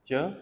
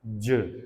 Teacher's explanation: when you say च, voice no vibration, j that is vibration. ठीक है, तो j that is जो हमारे पास वॉइस साउंड है, च there is no vibration है.